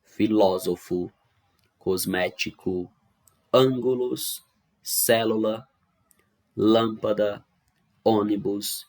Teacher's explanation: São palavras cuja sílaba tônica é a antepenúltima · são as palavras que têm a antepenúltima sílaba mais forte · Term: proparoxítonas